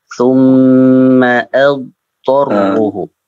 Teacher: Dadnya jangan sampai diqalqalahkan